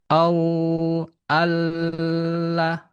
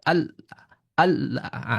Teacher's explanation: Kalau tertahan itu adalah syiddah. Maka huruf lam tidak boleh syiddah, tidak boleh tertahan. Pastikan dia mengalir. Contoh au all tidak all ah terhenti suaranya dia tidak jadi mengalir.